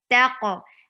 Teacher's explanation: Ta is light and qaf is heavy.